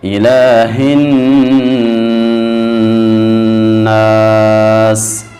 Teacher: ہا کو خوب موٹا پڑھیں گے۔ الہ ایسے واضح کر کے اور موٹا کر کے